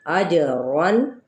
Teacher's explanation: جیم پہ قلقلہ اور تنوین زبر پہ اظہار